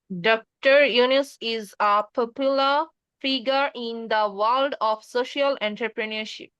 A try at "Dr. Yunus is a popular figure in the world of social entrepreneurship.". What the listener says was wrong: Right, এটা তো খুব সুন্দর উচ্চারণ করছেন।